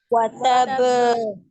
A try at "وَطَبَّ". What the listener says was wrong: تب نہیں ہے جی، یہ ہے وَطَبَّ. شدید کی شدت کو برقرار رکھنا ہے ہم نے اس میں. وَطَبَّ سے وَطَبَّ.